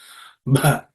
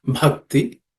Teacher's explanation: It has to be aspirated with extra air and emphasis.